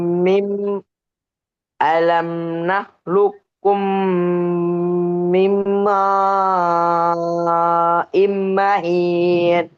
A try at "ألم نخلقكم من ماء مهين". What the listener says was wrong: கடைசியில ஹார்ட சவுண்ட் வருது இல்ல. மஹீன்.